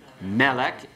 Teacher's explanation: You keep the accent on the meh part